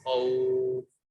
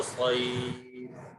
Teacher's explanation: جب حروف لین کے بعد اگر سکون ہو تو وہاں پر مد ہوتا ہے 3 الفی۔ تو اب خوفن، اس کو ہم ایسے پڑھیں خوفن کے جب ہمیں مد کرنا ہو تو ہم خوف، آرام سے مد کر سکیں۔